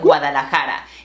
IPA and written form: ɡwa.ða.la.ˈxa.ɾa (Guadalajara)